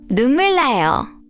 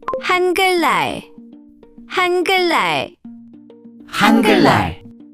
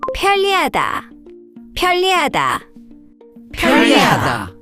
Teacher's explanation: When 니은 and 리을 come next to each other, the 니은 often changes to an 리을 sound. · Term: lateralization